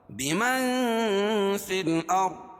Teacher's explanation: اخفاء حقیقی کیونکہ نون ساکن کے بعد حروف اخفاء کے 15 حرفوں میں سے فا ہے